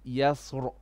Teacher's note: this word yasr should have been read with a heavy on the ra. So we should have said yasr.